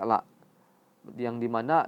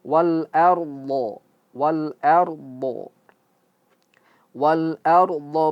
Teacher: ardho d itu merupakan huruf yang tebal juga istil langit-langit ee lidah yang di belakang terangkat ke atas. Huruf dhad ini huruf ee yang keluar dari pinggir lisan ya. Hafatil lisan ya.